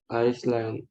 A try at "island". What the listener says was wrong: no no we do not pronounce that just a moment auto no need to pronounce s i land island